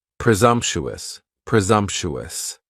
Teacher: presumptuous has four syllables and the stress is on that second syllable and the S almost sounds a little more like a z